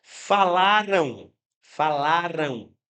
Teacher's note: esse M quando está no fim de palavras, né? No fim de palavras, é um M que pode funcionar como se fosse uma semivogal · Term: ditongo